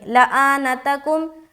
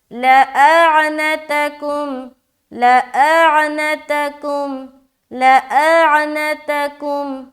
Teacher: سب حرف کو تو انہوں نے ادا کیا لیکن عین حذف ہو گیا